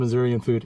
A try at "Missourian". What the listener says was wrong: I in there. I don't think anybody would pronounce the I.